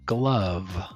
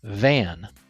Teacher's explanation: Let the air flow out through your mouth while your lower lip touches your upper teeth. Your voice is on, so you should feel vibration in your throat. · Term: V sound